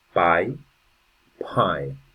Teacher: One thing that happens with the English language is the p sound is more aspirated.